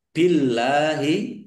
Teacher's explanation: Allahnya dibaca tipis karena harakat di depannya kasrah.